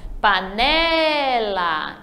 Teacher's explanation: Então, o né é a sílaba forte. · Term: paroxítona